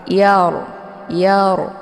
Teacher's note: ra ini dibunyikan secara tebal ya. Dan cara bacanya pangkal lidahnya terangkat.